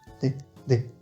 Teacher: les coréen vont avoir tendance à un peu le prononcer comme un D en début de mot